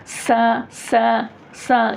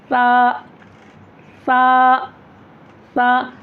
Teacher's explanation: सा में सीटी की आवाज़ नहीं होती है, सीटी की आवाज़ निकाल कर पढ़ते।